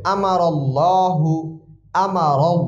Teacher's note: পড়তে হবে আমার আল্লাহু আমার আমার এমনিতে জবর আছে তারপর এখানে আল্লাহ শব্দের শুরুতে আসছে জবর এজন্য কি হবে এইজন্য আল্লাহ শব্দ মোটা করে পড়তে হবে